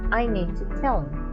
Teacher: The H sound disappeared. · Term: elision